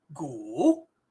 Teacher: The U is a third tone. It starts high, drops to mid, pops back up.